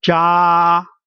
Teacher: sound is very flat all the way from the beginning to the end. Ja, we call it the first tone.